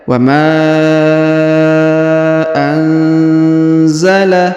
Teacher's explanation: Huruf nun sukun bertemu za, maka didengungkan dan disamarkan